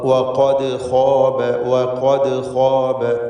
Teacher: വഖദ് എന്ന പദത്തിലെ ദാലിൻ്റെ സുക്കൂൻ ഖൽഖല സുഗ്റ നൽകി ശബ്ദം ഹറക്കത്ത് പോലെ ചലിപ്പിച്ച് വ്യക്തമാക്കേണ്ടതാണ് · വ എന്ന തർക്കീഖോട് കൂടിയുള്ള ശബ്ദം തന്നെ വരണം. വ എന്ന് തടിപ്പിച്ച് പറയരുത്.